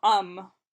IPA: ʌm